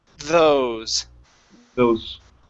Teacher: Okay, so the th is when you pronounce you place your tongue between your teeth, and it's a voiced sound.